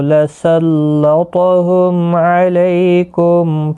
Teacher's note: لسلطہم، تو مستعلیہ ہے، پر پڑھا جائے گا، میم ساکن کے بعد عین اظہار شفوی ہوگا